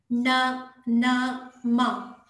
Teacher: ಮೂಗಿನ ಸಹಾಯದಿಂದ ಉಚ್ಚರಿಸಲ್ಪಡುವ ಅಕ್ಷರಗಳು ನ, ನ, ಮ ಈ ಕೊನೆಯ ಅಕ್ಷರಗಳು ಏನಿದೆ ಅದು ಮೂಗಿನ ಸಹಾಯದಿಂದ ಉಚ್ಚರಿಸಲ್ಪಡುವುದರಿಂದ ಅನುನಾಸಿಕ ಅಕ್ಷರಗಳು